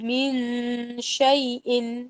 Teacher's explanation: من شیء میں نون اور شین کے درمیان غنہ ہو رہا ہے